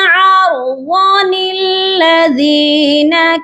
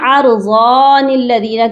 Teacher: ضاد کو بھی لمبا کر کے پڑھتے ہیں اور پھر نون کو بھی پڑھ دیتے ہیں۔ پھر آپ نے اس نون قطنی کو پڑھنا ہے تو یہاں پر آپ نے ضاد کو لمبا نہیں کرنا۔